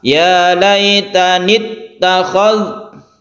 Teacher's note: Jadi langsung tidak dipanjangkan ya laitanit, tidak, tapi langsung ke tasydid ta.